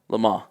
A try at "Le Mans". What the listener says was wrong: Don't say the end.